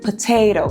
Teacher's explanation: Ou quando nós temos aí o T na sílaba tônica, na sílaba forte da palavra, como em potato, a sílaba forte, potato, tá vendo? Aí nós temos um Tzinho com aspiração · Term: T verdadeiro